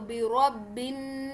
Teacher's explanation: बा को हम डायरेक्टली नून तशदीद से मिक्स करेंगे। ये जो बीच में अलिफ और लाम है इसे हम स्किप कर देंगे।